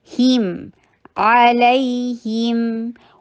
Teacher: हा के नीचे कसरा ई की साउंड करके मीम के साथ मिलाइए